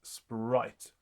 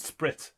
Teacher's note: the word spirit, even if it is written as spirit, is intended to be pronounced as 1 syllable, which means it actually was pronounced sprite.